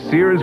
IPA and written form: sɪərz (Sears)